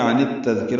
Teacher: دال نرمی سے پڑھیں گے. کاف باریک ہے، را پر ہے · فما مالف مدہ لهم میم ساکن پہ اظہار شفوی، عن التذکرة میں عن اور التذکرہ ملا دیا، عن التذکرہ ہو گیا، ادغام شمسی ہوگا